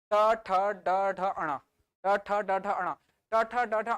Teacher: ट ठ ड ढ अणा उच्चारित करके देखो, आपका जीभ मुड़कर ऊपर चली जा रही है। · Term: मूर्धन्य